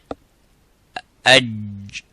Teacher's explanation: the sound stops completely and touches the bone of the roof of the mouth. قعر اللسان and say aj. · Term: jim